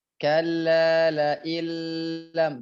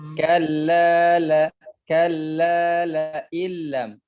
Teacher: jangan terlalu lama karena dia hanya singgah saja di sana, melebur huruf nun ke huruf lam.